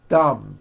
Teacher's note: My tongue came out, but there was never any air friction.